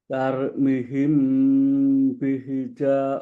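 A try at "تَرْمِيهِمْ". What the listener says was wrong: Tarmihim, tarmihim. Tahan sedikit di huruf ro. Di situ ada sifat tawar. Jadi bacanya tarmihim. Tahan satu harokat. Tarmihim.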